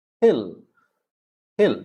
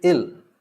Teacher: many british especially in britain they tend to drop the h whenever they speak